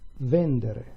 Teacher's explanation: with vendere instead, the stress is shifted one syllable to the left. This only happens with verbs of the second conjugation.